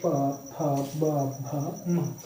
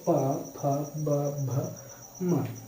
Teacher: ये होठों की सहायता से बोले जाते हैं। इसमें क्या होती है, हवा क्या करती है, होठों को स्पर्श करते हुए बाहर आती है। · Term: प वर्ग